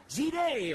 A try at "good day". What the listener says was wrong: No, it's good day. Like duh. You pronounce the duh sound.